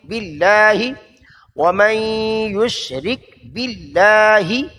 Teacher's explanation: لفظ اللہ کو موٹا نہیں کرنا، باریک